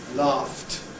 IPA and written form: lɑːft (laughed)